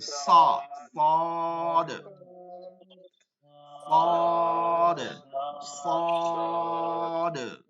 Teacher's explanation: মাখরাজ জায়ের মাখরাজ পড়ছিলাম না নিচের দাঁতের এইখানে ঠিক ওইখানেই লাগবে নিচের দাঁতের পেট থেকে আগা পর্যন্ত লাগবে জিহ্বার আগাটা হরফটা একটু মোটা করে পড়তে হবে